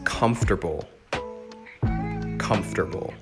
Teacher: the emphasis is on the comf part that first syllable